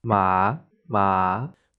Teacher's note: The third tone dips down and then comes back up.